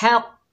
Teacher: हा के ऊपर ज़बर है, आगे कौफ साकिन है, हा को कौफ से मिलाएंगे, कौफ के ऊपर तशदीद है, तशदीद वाले हर्फ को यानी मुशद्दद हर्फ को 2 मरतबा पढ़ा जाता है और मजबूती और जमाव से पढ़ा जाता है। कौफ हैवी लेटर है, इसे मोटा अदा करेंगे